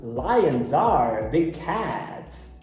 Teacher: Veja que nessa frase, lions are, a junção é com som de Z.